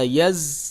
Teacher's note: زا حروف صفیریہ میں سے ہے، حروف صفیریہ 3 ہیں، زا، سین اور صاد، ان کو سیٹی کی آواز سے پڑھا جاتا ہے۔